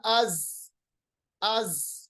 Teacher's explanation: तेज आवाज आपको निकालना है क्योंकि जा के अंदर तेजी की सिफत पाई जाती है, सिफत सफीर पाई जाती है